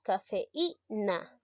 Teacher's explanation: la vocal que va a sonar más es la vocal cerrada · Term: hiatos acentuales